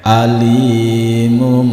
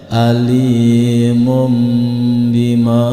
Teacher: nun mati yang bertemu dengan huruf ba berubah menjadi berbunyi m alimum serta tidak boleh disentak dan ditahan beberapa detik atau dua